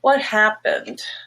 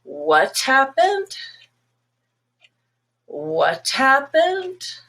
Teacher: if it rises then it's actually very steep rise it's a request for clarification